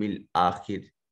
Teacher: والیوم الآخر، یو واو ساکن ما قبل مفتوح یا واو لین ہے، آخری حمزہ کے اوپر الف المدیہ صغیرہ اور خا کے نیچے خا جو ہے اس کو مفخم ادا کریں گے، یہ حرف مستعلیہ ہے اور را مکسور ہونے کی وجہ سے زیر لگنے کی وجہ سے اس کو بریک ادا کر رہے ہیں۔